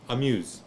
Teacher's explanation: it's so quick, it's so brief, it's like you're almost barely saying A, but you're mostly saying muse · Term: vocal shewa